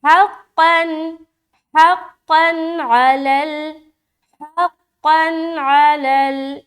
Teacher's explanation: दो ज़बर की तनवीन के बाद आइन आ रहा है, तो यहाँ पर इजहार का कायदा करेंगे, नून की आवाज़ को ज़ाहिर करेंगे